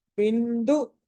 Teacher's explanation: బి తర్వాత అనుస్వారము తర్వాత ద ఉంది కాబట్టి అక్కడ న అవుతుంది